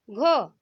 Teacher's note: आपको लग रहा है जब आप घ उच्चारित कर रहे हैं तब घ के साथ क्या है, ह मिला हुआ है। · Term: महाप्राण व्यंजन